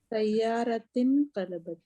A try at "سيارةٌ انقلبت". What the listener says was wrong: Oh, why do you change it to كسرة? لأن سيارة. Okay, because we know this Hamza is Hamzatul Wasl. So if we stop, then we will say لأن السيارة انقلبت.